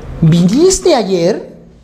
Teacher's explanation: cuando la pregunta te obliga a responder sí o no sí claro por supuesto no nunca tampoco la entonación de esa pregunta es ascendente